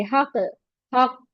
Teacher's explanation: नूहु निबनाहु यौमा इज़िनिल हक़, क्योंकि काफ दो बार मुशद्दद के साथ है, दो काफ है यहाँ पर, तो हक, इसको हक नहीं पढ़ेंगे, हक, हक, डबल साउंड लेकर आएंगे दो काफ साकिन के साथ।